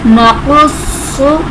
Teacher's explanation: नक़ुस्सु, स्वाद और क़ाफ हुर्फ़े मुस्तालिया मुशद्दद, स्वाद मुशद्दद है इसलिए इसे हमने थोड़ा जमाव के साथ पढ़ा और हुर्फ़े मुस्तालिया को हमने पुर करके पढ़ना है